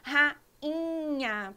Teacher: A gente acaba falando rainha, pronunciando este I com um som nasal que sai pelo nariz